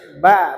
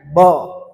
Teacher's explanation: Ini huruf ba dia tipis, dia huruf istifal. Jadi dibaca ba bukan bo.